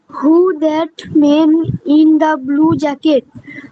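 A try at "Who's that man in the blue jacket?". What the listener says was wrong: এখন তুমি হুর পরে এসটা মিস করলে। হুজ দ্যাট ম্যান, actually হু is দ্যাট ম্যান ইন ব্লু জ্যাকেট?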